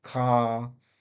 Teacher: next we've got the ah very open ah as in the word car